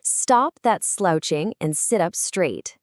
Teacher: All those repeating S sounds and the hard T sounds create this sharp almost hissing quality. It perfectly matches that commanding annoyed tone. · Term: Consonance